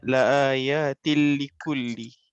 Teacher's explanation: Dia nun mati dan tanwin bertemu dengan huruf lam atau ra. Dia harus jelas, tidak ada dengung. Idgham kamil.